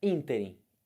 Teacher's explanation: Ínterim é proparoxítono. Quem é a sílaba forte do ínterim? O in. Esse in aqui, ó. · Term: sílaba tônica